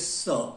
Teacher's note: अब स्थान, उच्चारण स्थान की बात करें तो दंत्य स, दंत्य है, दांतों से उच्चारण होता है। जीभ दांतों का स्पर्श करती है